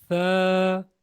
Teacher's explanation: باریک آواز سے پڑھیں، فا کی بجائے ثا